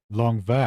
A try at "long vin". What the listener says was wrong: It's like you don't finish the end sound. You leave your mouth open for the end sound. Vin. Are you thinking croissant? You have to think croissant when you're doing this here. Long vin.